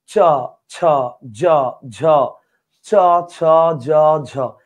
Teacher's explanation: উপরের তালুতে জিহ্বার মাঝখানটা ঘসা খেয়ে খেয়ে উচ্চারিত হবে · উপরের তালুতে জিহ্বার মাঝখানটা ঘষা খেয়ে খেয়ে উচ্চারিত হবে। তো তালুতে ঘষা খেয়ে উচ্চারিত হয় বিধায় এটার নাম তালব্য বর্ণ, আর ঘষা খেয়ে উচ্চারিত হয় বিধায় এটাকে ঘৃষ্ট বর্ণ বলা চলে।